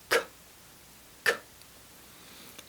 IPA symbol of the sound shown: k